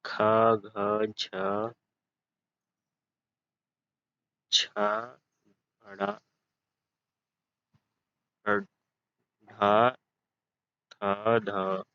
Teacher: अब दूसरा है महाप्राण। जिन व्यंजनों के उच्चारण में अधिक हवा, मुख से अधिक हवा निकलती है, उसे महाप्राण कहते हैं।